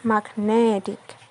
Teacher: It becomes magnetic. The stress moves from mag to net, but it remains on the stem but moves to a different syllable.